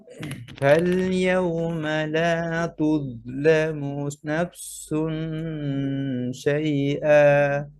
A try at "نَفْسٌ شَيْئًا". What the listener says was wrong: আগে ফায়ের হাম শেষ করেন, পরে সিন। নেফসু, নেফসু, যেন নাফসু মিলে না যায়। নেফসু,